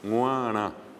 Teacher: La G nasal es la que está al principio.